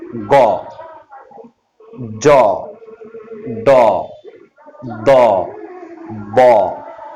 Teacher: দেখো তুমি এখানে খেয়াল করো, গ, জ, ড, দ, ব, এই বর্ণগুলো উচ্চারণে বাতাস কিন্তু কম বের হচ্ছে, এজন্য এগুলো অল্প প্রাণ ধ্বনি।